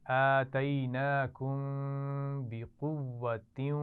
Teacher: آخر میں میم ساکن ہے اور اس کے بعد با آ رہا ہے تو یہاں پر غنہ بھی کریں گے.